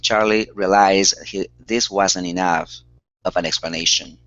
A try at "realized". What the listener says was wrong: Our stress is here at the very beginning instead of realized. Realized.